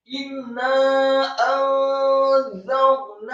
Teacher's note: Inna alifnya kasrah satu harokat, kemudian nunnya ditasydidkan dengan gunnah atau dengung seperti mat atau panjang dua harokat.